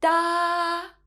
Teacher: The first tone, 一声, is a high flat tone.